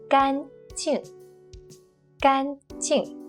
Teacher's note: When it's used as an adjective, meaning dry, it's the first flat and long tone.